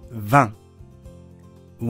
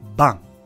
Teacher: V▁と▁B▁の決定的な違いは、V▁が摩擦音、B▁が破裂音です 。これを間違えると、似ているのに全く違う単語になることが多いです。ボン、風。ボン、ベンチ。ヴァン、ワイン。バン、お風呂。ヴェットモン、服。ヴェットモン、愚かにも。ヴ